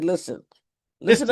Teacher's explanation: We don't pronounce the T. We say listen.